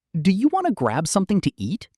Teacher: Notice that your voice rises slightly at the end because it's a question. >> That rising tone makes it sound like a friendly invitation.